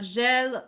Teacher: a soft J like the s in measure before e and i